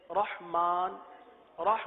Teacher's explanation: یہاں پر را آ گیا، اس را کو پر پڑھیں گے، ہا کو واضح کریں گے